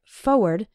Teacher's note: when speaking fast we sometimes say it like forward as if there wasn't that first R